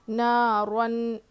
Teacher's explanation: اس کے بعد تنوین کے بعد حروف حلقی میں سے اظہار والا قاعدہ ہے، اس میں سے ہا آیا ہے تو ہم یہاں پہ تنوین کی آواز کو ظاہر کر کے پڑھیں گے، ناک میں نہیں چھپانا ہے، ظاہر کرنا ہے، کلیئرلی پڑھنا ہے اس کو واضح کر کے.